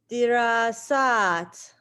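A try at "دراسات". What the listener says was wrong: Very good. Very good.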